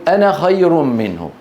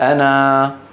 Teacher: كما اننا في كلمه انا نصل بنون مفتوحه ونقف بالف